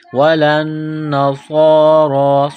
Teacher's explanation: ولن نصارا، لام کو نون کے ساتھ پلس کرنا ہے، نون مشدد ہے غنہ کریں گے. ولن نصارا، صاد کو موٹا کرنا ہے، را کو موٹا کرنا ہے، ایک الف کے لمٹ میں کھینچنا ہے